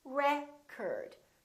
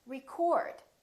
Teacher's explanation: if it's a noun it's pronounced as record the first syllable is stressed record this o changes so it's not oh it's a record